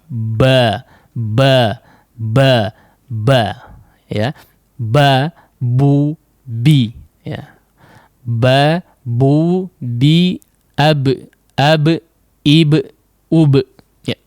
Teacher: Nah, kemudian untuk cara pengucapannya kita berharakat ya, maka dirapatkan kedua bibir tersebut secara kuat memang ya. Nah, kemudian dilepaskan baru terdengarlah suara ba yang cukup nyaring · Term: huruf ba